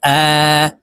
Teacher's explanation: মদের হরকতের উচ্চারণ এক আলিফ টানিয়া পড়িতে হয় যেমন প্রিয় দর্শক এখানে হরফের উপরে খারা জবর খারা জের উল্টা